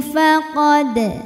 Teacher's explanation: maka dalnya dipantulkan dengan pantulan yang kecil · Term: Qalqalah Sugra